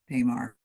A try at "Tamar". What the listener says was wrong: My name's pronounced Tamar with a short A.